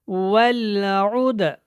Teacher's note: دال کے اوپر کیا ہو رہا ہے؟ قلقلہ، کیونکہ یہ حروف قلقلہ میں سے ہے